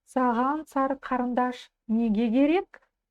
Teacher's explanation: Потому что в слове неге последней буквой идет гласная. А если гласная сочетается с согласной буквой, в данном случае с буквой К в другом слове, то эта буква К звучит как буква Г